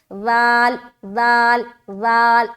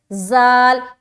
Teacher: اپنی زبان کی نوک کو ثنایا علیہ کے اندرونی کنارے پر لگانا ہے. ٹھیک ہے, اور اس کے بعد منہ کو اوپن کرتے ہوئے زبان کی نوک دانتوں کی جڑ میں ٹچ ہوگی.